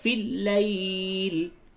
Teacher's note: لیل میں یا ساکن سے قبل زبر ہے، یہ یا لین ہے، نرمی کے ساتھ بولیں گے